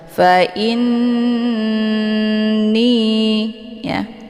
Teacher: Jadi cara bacanya, hamzahnya dileburkan ke dalam huruf nun ataupun dimasukkan dengan cara didengungkan, yaitu ditahan dulu lebih kurang 2 harokat sehingga terbentuk suara yang mendengung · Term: ghunnah musyaddadah